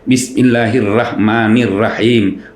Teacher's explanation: Orang Sulawesi kalau menyebut huruf ro itu pasti tipis.